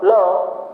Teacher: तालु में स्पर्श करेगी और बगल से हवा, किनारे से हवा जाएगी। पार्श्विक व्यंजन की संख्या 1 ल।